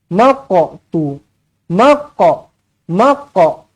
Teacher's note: Huruf qaf mati, qalqalah. Qalqalah kena lantun. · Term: qalqalah sughra